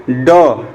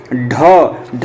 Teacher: जैसे ही ड बोलेंगे आप तो आपकी जिह्वा पीछे की तरफ मुड़ेगी। ढ भी बोलने के लिए आपकी जो जिह्वा है, जो जीभ वो पीछे की तरफ मुड़ेगी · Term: मूर्धन्य व्यंजन